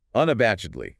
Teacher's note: 5 syllables. Unabashedly. Stress on the third syllable.